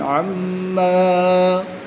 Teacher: میم مشدد میں غنہ کر کے پڑھیں گے